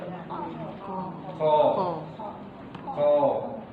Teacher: bagian pangkal lidah yang diangkat ke atas menyentuh langit-langit yang keras angkatnya babu belakang lidah Ibu lalu sentukkan ke langit-langit lalu dorong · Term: aqsal lisan